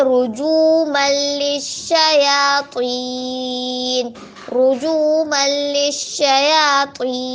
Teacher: اس کے بعد ہے رجوما للشیاطین، رجوما للشیاطین، جیما پہ جو، جیما پہ جو، واو مدہ، واو ساکنوں سے پہلے پیش ہو واو مدہ تو واو مدہ کو ایک مدار کھینچ کے پڑھیں گے